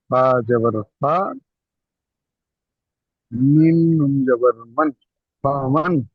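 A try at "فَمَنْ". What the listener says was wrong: ফামান, ফা টান হবে না, ফামান।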